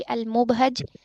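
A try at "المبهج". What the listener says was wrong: मुबहिज जेर है।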